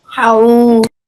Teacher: you join the ha onto the waw and you make it long for 2 seconds or 2 counts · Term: waw leen